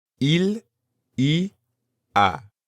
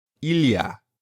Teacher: when spoken quickly, it usually sounds like one word, il y a.